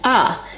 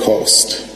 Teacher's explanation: Another feature that we see in DC, similar to New York, is the raised thought cloth vowel, that ah. This is a new feature in DC.